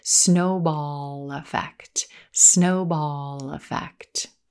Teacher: notice how that final l sound in snowball links or connects into the word effect